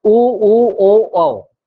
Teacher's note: उच्चारण करेंगे तो आपकी जो मुख की आकृति है, जिसमें आपकी जो ओष्ठ है वो कैसे होंगे, सर्कल राउंडेड हो जाएंगे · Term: वृत्ताकार